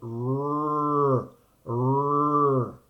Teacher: cacuminal, meaning that the tongue is cup-shaped, forelingual, the tip of the tongue takes part in this, and the front of the tongue.